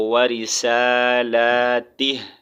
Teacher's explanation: last میں ہلکا سا ہم نے ہا کا ساؤنڈ نکالنا ہے وقف کی صورت میں